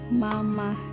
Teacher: Celotehan dimulai dengan konsonan dan diikuti oleh sebuah vokal. Konsonan yang keluar pertama adalah konsonan bilabial hambat dan bilabial nasal. Vokalnya adalah A.